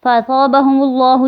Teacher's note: یا مدہ، فاصابہم اللہ، یہاں پہ میم لفظ اللہ سے پہلے میم کے اوپر پیش ہے تو لفظ اللہ کو موٹا پڑھیں گے